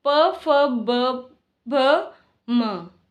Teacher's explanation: इन्हें ओष्ठ वर्ग भी कहा जाता है या फिर ये ओष्ठ वर्ण भी कहलाते हैं क्योंकि इनका उच्चारण करते समय ओष्ठ आपस में स्पर्श करते हैं